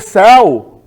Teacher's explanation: Mas se for céu, com E, aí eu tenho um acento e esse E é aberto.